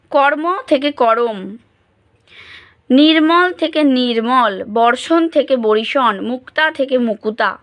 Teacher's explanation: তাহলে উচ্চারণ প্রয়াস কমানোর জন্য বা সরলীকরণের জন্য বা ছন্দের কারণে যুক্ত ব্যঞ্জন দুটির মধ্যে একটি স্বরধ্বনির অনুপ্রবেশ ঘটে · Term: স্বরভক্তি